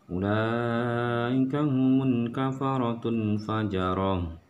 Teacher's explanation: suara dari tamar butoh ini berubah menjadi ha besar, yaitu ha yang keluar dari dada. Jadi suaranya agak ha.